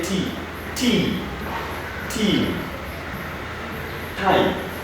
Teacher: So to make this sound, your tongue stops the flow of air at the front of your mouth. It is a voiceless sound